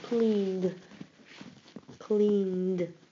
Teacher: the d sound seems to be part of the previous syllable.